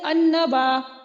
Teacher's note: دیکھیے یہاں پہ نون کے اوپر تشدید آ گئی ہے اور جو لام ساکن ہے وہ مدغم ہو گیا ہے نون میں، تو اس لیے یہاں پہ لام ال کا قاعدہ ادغام شمسی ہو رہا ہے کیونکہ لام پڑھا نہیں جا رہا.